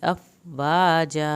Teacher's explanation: वाजा अलिफ दोनों जगह पे पूरा अदा करना है